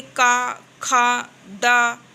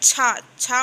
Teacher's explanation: छा बोलने में थोड़ी सी जीभ रगड़ खा रही है ना, तो इसको स्पर्श और संघर्षी व्यंजन कहेंगे।